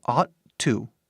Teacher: quando falamos rápido, esses T's que estão aqui juntam